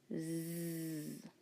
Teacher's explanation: turn on your voice to make it loud and buzzing make sure air is going out over your tongue listen does · To make our Z sound, all we have to do is first start with our good S sound, our S sound, and then turn on our voice. Z. Our tongue is going to be in the same position as we made our sound, and we're just going to turn on our voice.